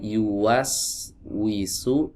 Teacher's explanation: Wau yang ada di sini tadi yuas wisu tumpuannya ada di dua bibir. Yuas wisu huruf W ya huruf W kalau dalam bahasa kitanya nih.